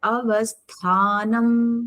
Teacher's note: When you are doing tha, it is a mahaprana. It has to come from your navel.